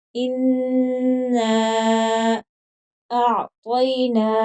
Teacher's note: نون پر غنہ بھی ہوگا، 3 الف کی مقدار کے برابر لمبا بھی کریں گے اس کو